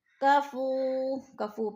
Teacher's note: کفو پہ وہ مدہ ہے، وہ مدہ کو ہم نے ایک الف دو حرکات کے برابر کھینچ کر پڑھنا ہے